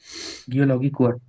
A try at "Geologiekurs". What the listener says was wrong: Geology, not, don't say it like English. Geology, not logi. Logi.